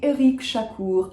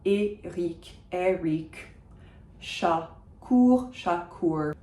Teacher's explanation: Final C is pronounced, final R is pronounced.